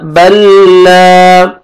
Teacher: हम बा को लाम शद के साथ, शद वाले लेटर के साथ मिलाएंगे। बा जबर लाम शद बल, लाम जबर अलिफ ला बल ला।